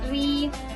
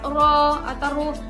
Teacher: Ro itu dibagi menjadi dua, ada ro tafhim, ada juga tarkik. Jadi kalau tarkik itu tipis seperti ri, kalau tebal itu bisa ro atau ru. Kalau ro berharokat fathah dengan duma itu dibacanya tebal.